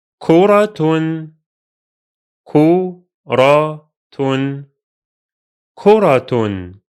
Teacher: Here, the Ta Marbuta is pronounced as a T sound because it carries a vowel. You pronounce it exactly as if it were a normal Ta.